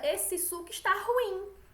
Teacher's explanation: E que nem ruim. Nesse caso, o acento tônico está como se fosse no I.